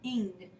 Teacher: we, again, don't sound out the N and the G separately. They form together as one sound, ing, instead of just n and g. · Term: digraph